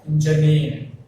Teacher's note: Engineer has three syllables again. The stress falls on the last syllable, near.